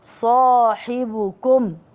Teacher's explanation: الصاد حرف مفخم خص ضغط قذ لذلك جاءت ألف المد مفخمة